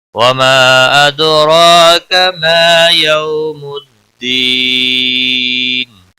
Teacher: وما مد منفصل ہے، 3 الف کے برابر کھینچ کر پڑھیں گے. دال ساکن پر قلقلہ ہوگا، را کھڑی زبر کی وجہ سے پر پڑا جائے گا، ایک الف کے برابر کھینچ کر بھی پڑھا جائے گا.